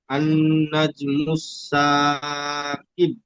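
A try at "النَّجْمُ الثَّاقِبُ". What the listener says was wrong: মাশাআল্লাহ, খুব সুন্দর পড়েছেন, খুব সুন্দর রিডিং পড়েছেন এবং বানান পড়েছেন।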